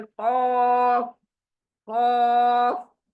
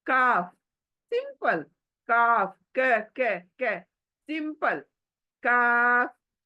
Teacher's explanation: खौफ मोटी है, एक काफ बारीक है।